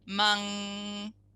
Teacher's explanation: when you say mung the n is actually the ng